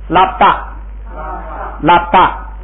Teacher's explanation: 这个波不用发出来，就发一个波的口声就行